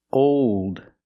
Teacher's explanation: When you make that dark L, the tongue gets tight and makes an extra sound.